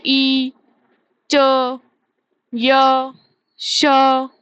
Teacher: चा के कोई भी वर्ग, चा वर्ग के कोई भी वर्ण बोलोगे, उसमें जीभ कहाँ लगेगी, ऊपर। ठीक है, ई, च, य, श, इन सबका उच्चारण स्थान क्या हो गया हमारा, तालु।